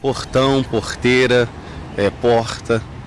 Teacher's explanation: Um pouco mais suave que a pronúncia carioca, sai da garganta também o R, ouvido em Belo Horizonte e nas capitais do Norte e do Nordeste. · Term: R gutural